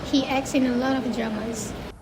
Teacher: The k, t, and s sound is tricky to say quickly, so the t sound gets dropped in natural speech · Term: cluster reductions